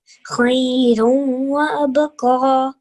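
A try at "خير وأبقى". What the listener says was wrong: Yeah, abqa. So that qaf sound should come from the back of the throat.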